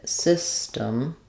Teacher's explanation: We're not really using system with a strong D, system. But it's basically an unaspirated T that we use there. So it's very muted.